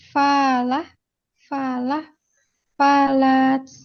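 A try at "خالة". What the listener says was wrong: Fa atau kha?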